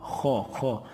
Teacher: حلق کے سب سے اوپر والے حصے سے موٹا بھی ہوگا